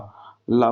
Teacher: ला ला बोलेंगे तो जुबान जो है वो ऊपरी हिस्से में दोनों साइड से लुढ़क करके एक नाव जैसी आकृति बनाती है और वर्ण का उच्चारण होता है तो ऐसी स्थिति में जो · जो वायु होती है वो दोनों किनारों से निकलती है, इसीलिए इसे पार्श्विक बोलते हैं। और पार्श्व का अर्थ है किनारा।